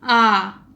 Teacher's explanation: विवृत आप बोल के देखिए एक बार, आ स्वर बोल के देखिए तो इसमें क्या होता है कि हमारे मुख के जो द्वार है, मुख का जो आगे का हिस्सा है वो पूरा का पूरा मुंह खुल जाता है।